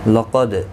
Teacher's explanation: قاف حروف مستعلیہ ہے، پر پڑھا جائے گا، دال ساکن پر قلقلہ ہوگا